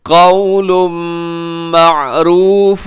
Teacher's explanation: قول پہ تنوین ہے، تنوین کے بعد میم یرملون کا یہاں ادغام غنے کے ساتھ